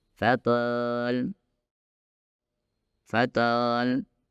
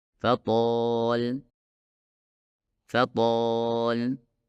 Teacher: bagian belakang lidah harus diangkat dengan pas agar menghasilkan suara huruf tho yang tebal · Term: huruf to yang tebal